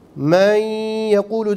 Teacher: İdgam meal gunne kuralı gereği nundan sonra ye, mim, nun, vav harfleri geldiğinde bunlar içerisinde asli itibariyle gunne sıfatı taşımayan vav ve ye harfleri de idgam meal gunne kaidesi gereğince burundan gelen bir sesle okunur · Y gunneli bir harf değildir. Fakat idgam meal gunnede biz men yekulu derken orada şeddeli okuduğumuz ye gunneli bir ye'dir. İşte hayşumdan da aynı zamanda ses gelir.